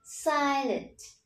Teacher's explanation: Nhấn trọng âm âm tiết đầu tiên